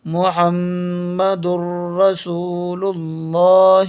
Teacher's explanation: میم پیش مو، ح میم زبر حم، محم، میم زبر ما، محم، دال را دو پیش در، یہ آگیا تنوین کے بعد را، محمدر، را زبر را، سین واو پیش سو، رسو، لام پیش لل، رسول، لام کھڑا زبر لا، رسول اللہ، ہا زیر ہی، محمد الرسول اللہ۔ یہ تنوین کے بعد یرملون کے 6 حرفوں میں سے را آیا تو یہاں پر غنہ نہیں ہوا ہے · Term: ادغام بلا غنہ